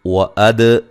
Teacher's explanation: وَأَد دال پہ قلقلہ